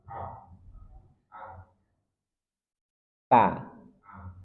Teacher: Ujung lidah dari permukaan atasnya bertemu dengan gusi gigi seri atas